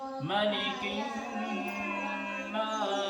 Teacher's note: نون کے اوپر دیکھو تشدید ہے تو یہاں غنہ ہوگا ایک الف کے برابر، اور ایک الف کے برابر اس کو کھینچیں گے بھی.